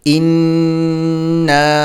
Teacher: نون پر تشدید ہے تو اس پر غنہ بھی کریں گے، اور الف پر مد ہے تو اس کو 4 الف کے برابر کھینچیں گے۔